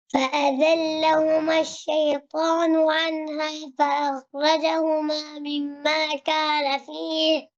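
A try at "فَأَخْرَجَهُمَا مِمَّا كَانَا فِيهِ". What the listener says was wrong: ফাআখরাজা খ মোটা হবে আর এখানে বিগ মিস্টেক মিম্মা কানা এই যে ফাতহার পরে আলিফ জবরের পরে আলিফ থাকলে কি হয়?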